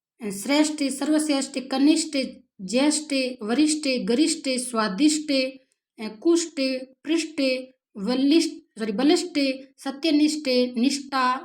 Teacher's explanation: ऐसे शब्द जिसमें ठ महाप्राण ध्वनि का प्रयोग किया जाना चाहिए।